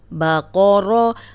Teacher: اب قوف موٹا پڑھیں گے، را پہ زبر را موٹی پڑھیں گے، لیکن با کو موٹا ہونے سے بچائیں گے. با کو موٹا نہیں پڑھنا.